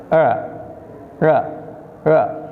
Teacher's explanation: Yang terakhir dibacanya R, tapi dibacanya seperti tidak nempel R-nya ke langit-langit atas